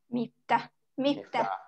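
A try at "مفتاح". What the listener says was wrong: Panjang, miftah.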